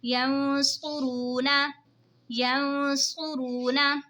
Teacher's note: नून साकिन के बाद हुरूफ़े इक़फ़ा का स्वाद आ रहा है तो इक़फ़ा होगा यानी गुन्ना करके पढ़ेंगे